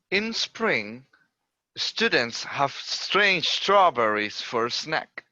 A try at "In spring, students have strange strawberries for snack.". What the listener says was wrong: Very nice, good one.